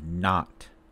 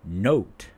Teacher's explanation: ah is low central lax, but o is mid-back tense vowel. So, when we pronounce ah, lips should not be rounded.